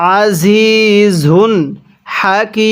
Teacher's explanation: এখানে ওয়াকফের সময় তিন আলিফ টেনে পড়ব। ওয়াকফের সময় যদি ওয়াকফের শেষ হরফের পূর্বের হরফে আলিফ ইয়া এই তিনটি হরফ থাকে।